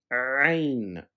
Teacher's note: Va, as in this, but heavier. Ain, it's a guttural sound that is made by constricting the air in the throat